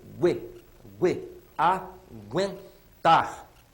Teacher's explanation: Trema na letra U, aquele U está sendo pronunciado de maneira muito rápida